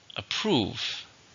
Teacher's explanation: 2 syllables, stress on the second.